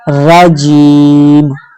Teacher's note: यहाँ पर हम जीम को 2 हरकात की मिकदार लंबा करेंगे, 1 अलिफ की मिकदार यानी 1 सेकंड तक